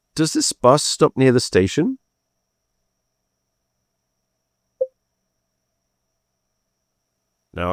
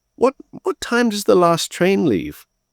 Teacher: Notice the kind of the polite questioning rising intonation. So with that intonation, you're letting someone know that you're sorry that you're having to bother them, but you have a question and you're not sure about this thing.